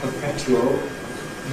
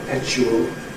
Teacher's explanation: What Daniel Jones called ‘perpetual’ [pəˈpetjuəl], most people nowadays call [pəˈpeʧuəl]